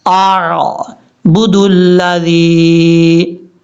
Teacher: حمزہ سختی سے پڑھا جاتا ہے، عین جو ہے وہ نارمل طریقے سے پڑھا جاتا ہے۔